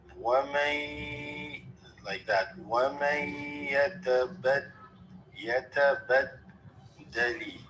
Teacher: You have a ya followed after the noon sakina. So there's an assimilation here.